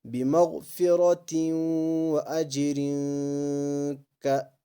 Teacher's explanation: بمغفرۃ، واو زبر و، بمغفرۃ و، حمزہ جیم زبر اج، بمغفرۃ و اج، را دو زیر رین، بمغفرۃ و اجر، کاف زبر کا، بمغفرۃ و اجر کا تنوین کے بعد کاف حروف اخفا کے 15 حرفوں میں سے آ رہا ہے، اس لیے یہاں پر اخفائی حقیقی ہوگا۔ نون کی اس تنوین کی آواز کو ناک میں چھپا کر پڑھیں گے